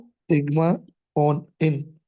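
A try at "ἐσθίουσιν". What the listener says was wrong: ऑन क्यों पढ़ रही है? सिन है, इन है, सिन। एस्थ्यू सिन, एस्थ्यू। एस्थ्यू सिन। ओमिक्रॉन और नू नहीं है कि आप ऑन पढ़े। अयोटा और नू है, आपने इस तरह से इसको पढ़ना है।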